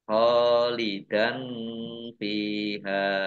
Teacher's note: Kha fathah alif mat tabi'i, panjang 2 harokat. Fathah tanwin bertemu dengan huruf fa, bacaan ikhfa, dibaca samar-samar. Fa kasroh ya sukun mat tabi'i, hak fathah alif mat tabi'i juga, dibaca panjang 2 harokat.